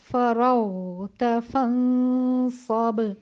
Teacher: غین جو ہے وہ رخاوہ کے حروف میں سے ہے تو اس کی آواز تھوڑا سب سے زیادہ دورانیہ چلے گی